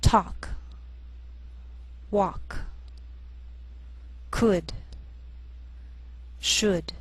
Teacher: sometimes L can be silent